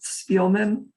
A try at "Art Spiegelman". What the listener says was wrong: Spiegelman. There's a G in there. Spiegelman. Art Spiegelman.